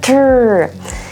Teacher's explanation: The word truck begins with the letter T, T, R, and together they make a letter blend that says tur, tur. It almost sounds like a ch sound, doesn't it? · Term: TR sound